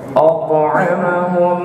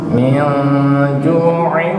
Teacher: Kalau ketika bacaan itu ghamdi gunnah, maka dia dengung. Dengungnya itu sampai ke rongga hidung, ke hidung.